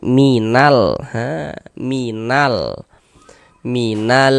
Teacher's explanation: Cuman kalau di Indonesia biasanya itu lebih dikenal dengan alif lam qamariyah, seperti itu. Alif lam qamariyah maka huruf lamnya dibaca izhar, dibaca jelas, terbaca huruf lamnya.